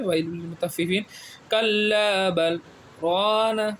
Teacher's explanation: بل میں رکیں گے، سانس نہیں چھوڑیں گے۔ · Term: سکتہ